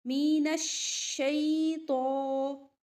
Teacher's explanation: شین میں تفشی ہوتی ہے، آواز پھیلتی ہے اس طرح سے. مین الشیطان الرجیم، نر، را کے اوپر بھی جب زبر یا پیش ہو تو موٹی پڑی جاتی ہے، ٹھیک ہے.